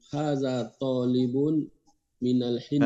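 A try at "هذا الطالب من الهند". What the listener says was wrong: Hadza talibu. Ada alif lamnya, jangan ditanwinkan. Hadza talibu dimasukkan karena dia alif lam syamsiyah.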